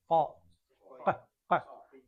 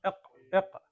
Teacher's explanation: இந்த இடத்துல காஃப் வந்து ஃபுல்லா கீம் கா க க. எங்களோட நாக்கு பின்னுக்கு மேலே படணும்